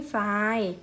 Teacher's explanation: ทรเป็นเสียงซอโซ่ใช่ไหมทรายเป็นคำควบกล้ำไม่แท้